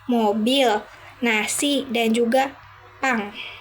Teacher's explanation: bunyi ini dihasilkan dengan menutup saluran mulut dan membiarkan udara keluar melalui hidung. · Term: Konsonan nasal